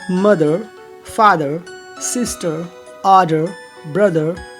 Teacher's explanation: English में maximum बोलचाल के शब्दों में आर को हम साइलेंट रखते हैं, उसके प्लेस पर हल्का अ का उच्चारण होता है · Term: आर साइलेंट